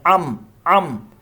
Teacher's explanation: عین کی جو دو زبر کی ساؤنڈ ہے ان بننا چاہتا ہے، ان کو ام پڑھ دینا